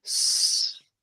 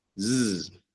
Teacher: how could a sound be voiceless like this S. It's only air S, right? Whereas Z is voiced.